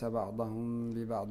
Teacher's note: كذلك الميم قبل الباء فإنها تخفى أيضا مع الغنة